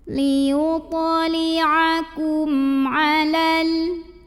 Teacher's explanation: Karena ada mim sukun yang menghadapi huruf selain mim dan ba yaitu huruf ain. Maka cara baca mim sukunnya adalah dibunyikan dengan idhar atau jelas bunyi M-nya. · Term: idhar syafawi